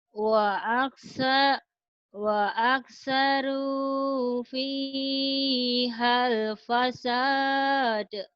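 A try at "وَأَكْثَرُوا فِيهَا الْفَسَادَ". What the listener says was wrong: Fa bukan wa ya. Fa, Fanta F. Fa aktsaru fihal fasad. Fa aktsaru.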